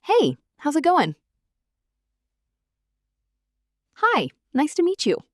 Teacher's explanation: Notice the melody. It goes up slightly at the end. That upward inflection signals friendliness and openness. A flat, monotone hi, nice to meet you can sound cold or uninterested, even if that's not what you mean.